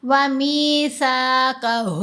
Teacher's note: سا کو ادا کرتے ہوئے زبان تھوڑی سی منہ سے باہر نظر آئے گی، دانتوں کے درمیان میں رہے گی۔